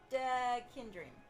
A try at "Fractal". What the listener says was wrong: I think there's an L in there. Fractal... Fractal.